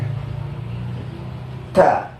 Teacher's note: ujung lidahnya itu nempel pas tengah-tengah garis antara gusi sama gigi seri yang di atas